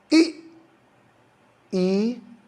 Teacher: बड़ी ई में मुंह बहुत कम खुलता है